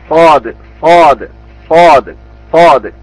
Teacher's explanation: രണ്ടു മുൻപല്ലുകളുടെ ഇടയിൽ നിന്നാണ് ഈ അക്ഷരം ഉച്ചരിക്കേണ്ടത്